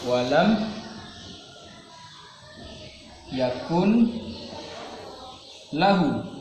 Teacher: Nun sukun bertemu dengan huruf lam dinamakan idgham bila gunnah.